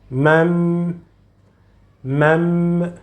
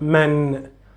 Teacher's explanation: So in this case, while reading, you need to read these two words together. You will convert, you will change the sound from noon to meme, and you will find always the sound meme present in the above the letter noon.